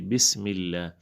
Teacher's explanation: لفظ اللہ سے پہلے جو ہے میم کے نیچے زیر ہے تو اس کو ہم باریک پڑھیں گے